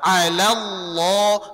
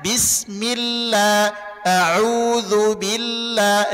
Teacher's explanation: kalau lafaz Allah sebelumnya fathah dan dhammah tebal dia, tapi kalau sebelumnya kasrah tipis dia.